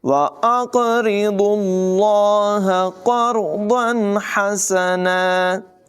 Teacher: قاف کو، را کو اور ضاد تینوں کو پر پڑھا جائے گا · یہاں پر لفظ اللہ کو پر ادا کیا جائے گا، اس لیے کہ اس سے پہلے پیش ہے